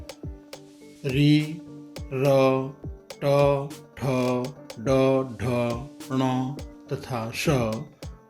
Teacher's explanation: रि, र, ट, ठ, ड, ढ, ण तथा श मूर्धा की सहायता से बोले जाते हैं। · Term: मूर्धा स्थानीय वर्ण